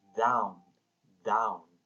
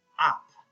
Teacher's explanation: Falling intonation, down. Rising intonation, up.